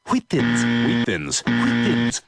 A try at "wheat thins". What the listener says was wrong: Why are you putting so much emphasis on the H? Say wheat. Now say wheat thins.